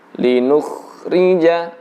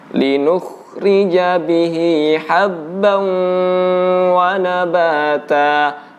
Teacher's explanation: cara mengucapkan kha yang bersukun, begitu juga ghain yang bersukun, itu adalah dibulatkan bibir kita